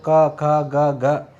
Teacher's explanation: ये जो वर्ण है इनका उच्चारण स्थल होता है कंठ से और इस वर्ण ध्वनि को कहते हैं कंठ्य या कहते हैं कोमल तालव्य